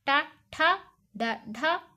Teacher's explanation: నోటి పైభాగం నుండి పుట్టిన వాటిని మూర్ధన్యాలు అంటారు